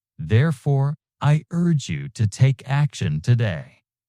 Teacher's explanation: Strong, decisive fall. · Use a strong, clear falling intonation for your call to action, conveying certainty and direction.